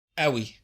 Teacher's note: The q sound is usually pronounced as a glottal stop in Egyptian Arabic